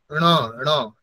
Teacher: ণ মানে জিহ্বাকে ওপরের অংশে নিয়ে যেতে হবে, তালুর ওপরের অংশে।